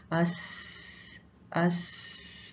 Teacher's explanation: इसकी अदायगी के दौरान सांस जो है वो जारी रहता है, सांस खुलकर बाहर निकलता है। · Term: सीन